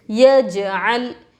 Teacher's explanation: یجعل، یا جیم زبر یج، عین لام زبر عل، یجعل. جیم حروف قلقلہ میں سے ہے، ان کو پڑھتے وقت ان کے مخرج ٹکر کھا کر الگ ہوں گے. لام کے اوپر جزم پچھلے والے حرف سے ملا کر پڑھیں گے.